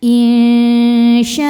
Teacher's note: Cara baca nun sukun ini adalah disamarkan menuju syin kemudian dengungkan. Nah, tingkat kesamaran dan dengungannya sama besar karena syin makhrajnya tengah-tengah ya, tidak terlalu dekat juga tidak terlalu jauh dari nun. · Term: ikhfa hakiki